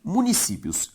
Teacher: A sílaba tônica de municípios, si, é a penúltima, ou seja, uma palavra paroxítona.